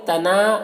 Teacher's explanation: نا میں الف مدہ ہے، 1 الف کے برابر کھینچیں گے